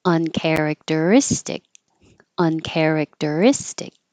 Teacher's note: underline it to show that it gets longer but um is istic is the stress syllable it's longer but higher · the care is secondary stress so I underline it to show that it gets longer